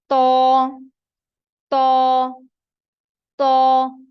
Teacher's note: इन तीनों में जो जबान की नोक है जो ऊपर वाले सामने के दांत हैं इनकी जड़ की तरफ लगती है